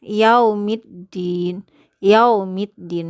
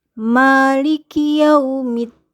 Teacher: Ketika waw disukunkan bunyinya adalah u bukan o ya